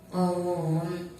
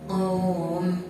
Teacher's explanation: Di situ ada mad waw didahului huruf qaf yang berharokat fathah dan bertemu dengan huruf mim yang diwakafkan, maka cara bacanya panjang. Panjangnya boleh 1, 2, 3 alif atau 2, 4, 6 harokat.